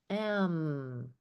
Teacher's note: going to look like this I'm just doing this m so m b p all are made on the lips they're called bilabials we use both our lips